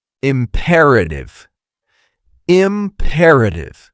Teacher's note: Four syllables with stress on the second.